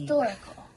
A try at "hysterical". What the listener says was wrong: And then you said historical. Oh, that doesn't say store or. That says Hysterical. Hysterical.